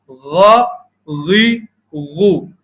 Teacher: غین اور خا حلق کے اوپری ابتدائی حصے سے ادا ہوتے ہیں